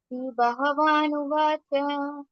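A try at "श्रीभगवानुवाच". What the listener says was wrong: Not ha. It is Bhaga. Bhaga. Bhagavan.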